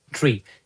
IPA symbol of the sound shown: iː